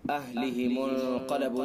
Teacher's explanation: اہلہم انقلبوا، نون ساکن کے بعد اخفاء کے 15 حروف میں سے قاف، لہذا اخفاء حقیقی ہوگا جو بھی بتلا. قاف حروف مستعلیہ میں سے لہذا قاف کو پر پڑھیں گے.